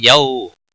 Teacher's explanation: یو واو لین ہے، تھوڑا نرمی کے ساتھ کھینچ کر پڑھیں گے